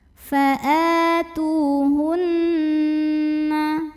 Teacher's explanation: Lalu berikutnya ada hukum gunnah musyaddadah karena nun bertasydid. Cara membunyikannya dengung, bunyi n-nya tahan sampai kerasa getarannya ke hidung.